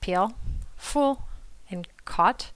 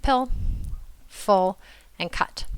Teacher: for tense vowels we have peel fool and cot and for lax vowels we have pill full and cut